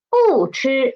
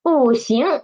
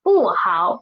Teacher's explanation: when Bu is in front of the first, second, and third tone, it will change nothing. It won't change. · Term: tone Sandy